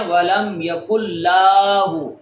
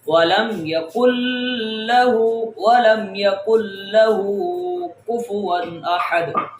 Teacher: ہا کو لمبا کریں گے، لام کو لمبا نہیں کریں گے